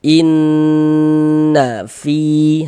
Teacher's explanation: Di bagian innya itu suaranya itu kita tahan, kita panjangkan sejenak. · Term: gunnah musyaddadah